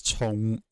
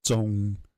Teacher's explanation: But yeah, for example, in Cantonese, one is chong and one is zhong. So one's like aspirated in the rising tone, which is the one for heavy, and one is unaspirated in the departing tone